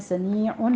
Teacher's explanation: आइन को वस्ते हलक से अदा करना है।